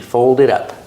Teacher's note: The T in it is a fast D.